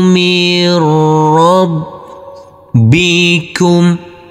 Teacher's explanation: Huruf nun kita leburkan. Dan huruf ro cukup kita tekan dan kita tahan saja dengan 2 harokat karena ini adalah bacaan idgham bila gunnah tanpa kita dungkan.